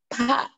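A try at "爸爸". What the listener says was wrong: Jangan dikeluarkan semua ya. Cuman ada ha-ha-ha-nya yang dikeluar. Pa, satunya pa. Pa-pa. Pa.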